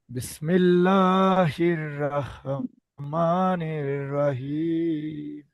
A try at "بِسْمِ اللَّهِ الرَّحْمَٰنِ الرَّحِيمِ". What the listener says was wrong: প্রথমটার মধ্যে রা হয়ে গেছে, রহ আবার বলেন, বিসমিল্লাহির রহ হবে, আবার বলেন।